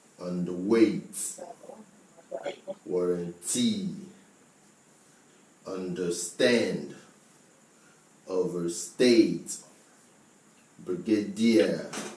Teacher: three-syllable words that have the stress on the last or the third syllable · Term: stress on the last syllable